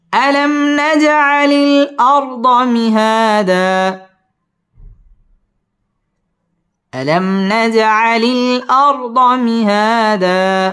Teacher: দা 2 জবরের বামে যদি ওয়াকফ হয় তাহলে একালিফ টান দিয়ে ওয়াকফ করতে হয়।